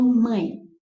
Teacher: Dois sons vocálicos na mesma sílaba, então é ditongo. A vogal que é maior, pronúncia mais forte, veio primeiro, então do mais forte para o mais fraco, ditongo decrescente. Tem um tio aqui, então nasal. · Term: ditongo decrescente, nasal